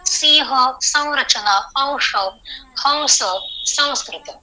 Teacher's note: इस प्रकार का जो अनुस्वार है उसका उच्चार करते समय होठों को अलग अलग रखना है, उसको मकार की तरह उच्चार नहीं करना है। सिंह, संरचना, अंश, हंस, संस्कृत।